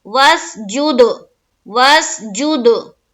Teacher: چونکہ دال حروف قلقلہ میں سے ہے تو یہاں پر ہم کریں گے قلقلہ · ہم واو کو سین سے جب ملائیں گے آواز رک جانی چاہیے